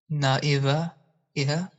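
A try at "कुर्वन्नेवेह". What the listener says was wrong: Not na, but Kurvan.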